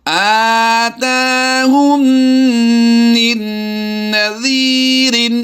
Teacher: میم مشدد اور نون مشدد میں ہمیشہ غنہ ہوتا ہے، اور یہ غنہ آنی کہلاتا ہے، اور یہاں پر ہم نے بالکل ناک سے آواز نکالنی ہے